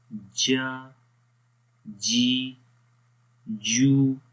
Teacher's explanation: زبان کا درمیان والا حصہ جب تالو کے درمیان والے حصے کے اوپر ٹچ کرے گا تو وہاں پر جیم کی آواز پیدا ہوتی ہے۔ جیم زیر جی، جیم زیر جی، جیم پیش جو، جیم پیش جو، بغیر جوڑ کے پڑھیں گے۔